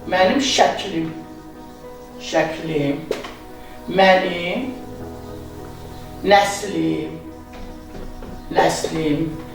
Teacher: ərəb fars mənşəli sözləri hallandıranda sözün ikinci hecasındakı sait düşür.